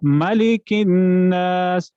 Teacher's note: میم دو ہونٹوں کے ملاپ سے ادا ہوتا ہے